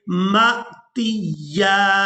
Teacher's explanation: میم کو حمزہ ساکن کے ساتھ ملائیں گے تو جھٹکے کے ساتھ ادا کریں گے اور اس کے بعد تا کو یا مشدد کے ساتھ ملائیں گے.